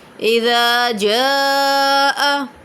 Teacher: اذا پہ الف مدہ ہو رہا ہے، جا پہ حرف مدہ کے بعد حمزہ اسی کلمے میں ہے تو مد متصل ہو رہا ہے۔ یہ حمزہ ہے، جا پہ ایک کلمہ ہوتا ہے، یہ کلمہ ختم ہوتا ہے تو مد متصل ہو رہا ہے۔